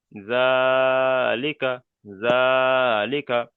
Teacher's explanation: যে আলিফ মাদ্দা আলিফের ডান দিকে যাবার থাকলে আলিফ মাদ্দা, ওই আলিফ মাদ্দা, আলিফ মাদ্দার সমতুল্য, তাই খাড়া জাবারকে এক আলিফ পরিমাণ টান দিয়ে পড়তে হবে